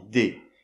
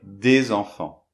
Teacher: Et le S, on le prononce pas, on dit des. Et pourtant, on va dire des enfants. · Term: liaison